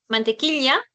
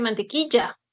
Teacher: La presencia del yismo, el sonido de Y, en lugar del sonido de la doble L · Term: yeísmo